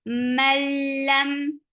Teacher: this is idgham without gunna so there shouldn't be any gunna you're not keeping the sound in your nose